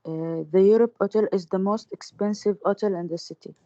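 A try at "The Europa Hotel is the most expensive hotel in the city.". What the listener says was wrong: Okay, so obviously you're not pronouncing the ha sound. Why is that? Do you speak French? No, it's hotel. We pronounce the ha sound. So Europa Hotel, okay?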